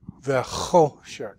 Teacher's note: And then you've got your closed syllable shek. And the accent in this word is on the cho